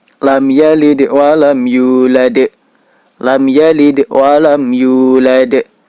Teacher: Cara membacanya yaitu dengan cara dipantulkan. Huruf dal, cara memantulkannya yaitu menyerupai huruf e. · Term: qalqalah kubra